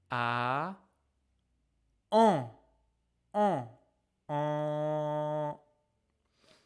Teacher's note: tu ouvres la bouche comme pour faire le son a and then you put your lips forward round and put your tong backward.